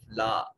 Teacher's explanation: الف خالی از حرکت ما قبل مفتوح، الف مدہ ہے، ایک الف کے برابر لمبا کریں گے